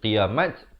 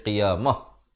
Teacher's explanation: Dan waqafkan ta itu diberikan tanda mati mendatang dan ditukarkan kepada bunyi ha. Mah bukan qiyamat tetapi qiyamah, ya.